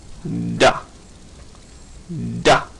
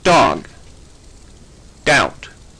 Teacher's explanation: it's a d as in dog doubt if you put your hand on your throat you'll feel that vibration dog doubt in un voiced alveolar consonant sounds like this t